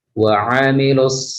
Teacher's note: Lalu ain di sini makhrajnya terletak di tengah, ya, tenggorokan bagian tengah.